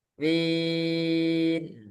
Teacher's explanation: Jadi mi masuk hidungnya cuma sebentar ketika mimnya saja.